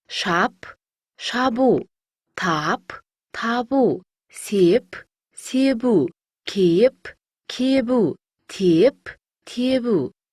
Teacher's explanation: П дыбысына аяқталған сөздерге У дыбысы жалғанса, П дыбысы Б дыбысына айналады.